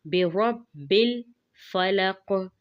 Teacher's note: برب الفلق، قاف پہ قلقلہ کریں گے